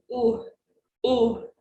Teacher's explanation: your tongue should be pulled back your lips will be rounded relax it your tongue will be back and relaxed oh you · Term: o sound